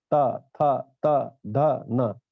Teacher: त वर्ग की जो ध्वनि है, जीभ दांत से टकराती है